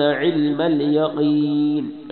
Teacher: عین گلے کے درمیان سے